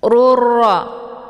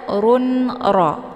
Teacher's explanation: harakat tanwinnya dimasukkan ke dalam huruf ra dengan cara ditekan dan masuknya adalah kamil secara sempurna tanpa tersisa bunyi tanwin. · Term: idgham bila ghunah